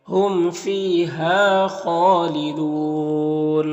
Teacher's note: خا حروف مستعلیہ میں سے پر پڑھیں گے، اور کھڑا زبر ہے جو الف مدہ کی طرح ہوتا ہے، اور یہاں پر وقف کریں گے تو مد عارض وقفی ہوگا، تو اس طرح سے پڑھیں گے۔